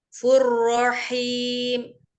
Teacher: ada domah tanwin ketemu dengan ro dibaca idgham bila gunah, maka dilebur langsung ke huruf ro